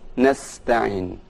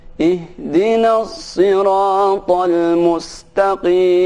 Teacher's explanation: untuk huruf sin itu dibaca dengan tipis nasta'in. Adapun huruf sad dibaca sedikit ada penebalan, yaitu sedikit dimonyongkan.